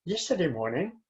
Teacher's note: the voice goes up or down so we say yesterday morning i have not finished saying what i want to say and that's why i go up a little bit